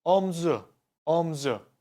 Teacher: His shoulder means omzu. Omzu. I dropped the u this time.